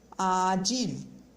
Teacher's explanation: A língua, ela sobe sim, mas é de um jeito mais suave, não chega a ser como o L do espanhol. Vamos dizer que a língua fica aí no meio do caminho, vamos comparar aí com esse som, ok?